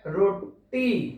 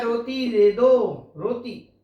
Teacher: ट ना बोलकर क्या बोलता है, ता बोलता है